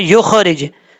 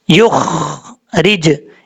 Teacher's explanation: ख्वा में कलकला नहीं करना, ख्वा को सिर्फ पुर पढ़ना है, युख रिज, इस तरीके से पढ़ना है।